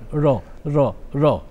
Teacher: রটা জিভটা একটু সামনে আনতে হবে, উপরের দাঁতের পেছনে জিভটা ঠোকাতে হবে,